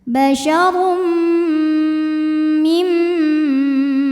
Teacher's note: Kemudian ada hukum idgham bi gunnah karena ada tanwin dhammah menghadapi huruf mim. Maka tanwin dimasukkan ke mim disertai dengung. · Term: idgham bighunah